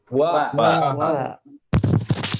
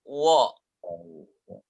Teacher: wa yang berharokat fathah yang harusnya dibaca dengan a akan dibaca wo. Dan itu kesalahan.